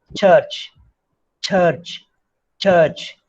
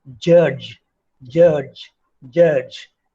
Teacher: the sound in the beginning and the end is produced without the vibration of vocal cords.